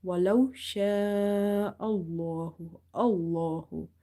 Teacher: hamza is having fatha and this is occurring before this lam. So lam will be heavy.